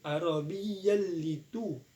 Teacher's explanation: Di kita sini adalah cara bacanya sebab bertemu huruf fathatain dengan huruf la. Cara bacanya langsung dimasukkan. Arabi tidak dengung. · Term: idgham bila guna